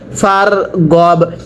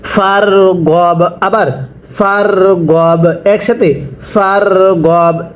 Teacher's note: র সাকিনের পূর্বে জবর হলে র সাকিন মোটা করে পড়তে হয়